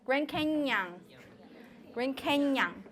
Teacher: The nyang sound is actually the palatal nyang.